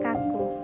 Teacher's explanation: dan plosif contoh kata dari dan yang terakhir ada kata bunyikah ciri-cirinya itu mati oral velar dan plosif